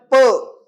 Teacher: प, ओठ एकमेकांना चिकटले